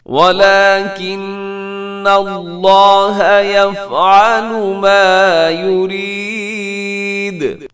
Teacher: وَلَكِنَّ نون مشدد ہے، غنہ ہوگا